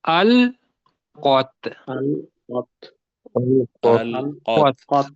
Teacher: لام کو موٹا نہیں ہونے دینا